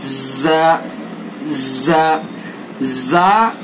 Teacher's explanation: जबान की नोक सना सुफला का किनारा और कुछ इत्तिसाल सना उलिया से, यानी जबान की नोक को सना सुफला के किनारे पर लगाएंगे और थोड़ा सा सना उलिया से भी उसको टच करेंगे